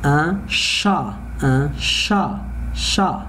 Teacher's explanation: I don't pronounce the letter N here because I have consonant letter, it is not vowel letter.